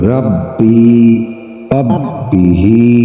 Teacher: یا ساکن سے پہلے زیر ہے. یا مدہ ہوئی، اس کو تھوڑا سا لمبا کر کے پڑھیں گے.